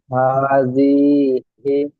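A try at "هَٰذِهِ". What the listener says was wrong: জিটা টান হয়ে যাচ্ছে, হাজিহি। হা খাড়া জাবার হা।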